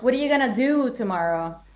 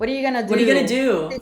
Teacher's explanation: Il do praticamente, che è una parolina di due lettere, prende il tempo di What are you gonna?